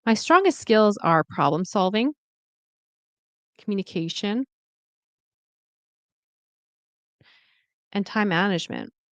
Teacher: Because I'm listing something, the intonation goes up at the end of each like list, thought group